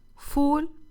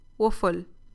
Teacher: فول has a long vowel واو, whereas فل has a short vowel ضمة